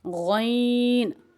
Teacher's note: غین موٹے حروف میں شامل ہوتا ہے اور غین کو منہ گول کر کے پڑھا جاتا ہے